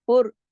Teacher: फा बारीक, रा मोटा पढ़ा जाएगा क्योंकि रा पे पेश का असर आ रहा है।